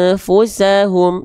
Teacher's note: dibaca dengan menyamarkan bunyi an disertai dengung 2 harokat. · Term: ikhfa